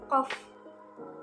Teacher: Uvular merupakan keluarnya huruf dari bagian langit-langit yang menonjol ke bawah, yang menjadi satu-satunya artikulator, sedangkan lidah bagian belakang tidak sampai pada batas bersentuhan dengan langit-langit.